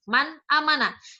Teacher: Jadi cara membaca huruf nun mati tersebut adalah jelas, tidak dengung, tidak samar. Man amana, jelas dibaca nun. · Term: izhar